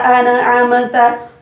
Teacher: nun ujung lidah itu bertemu dengan gusi atas, an ya, gusi atas bagian dalam, an'amta.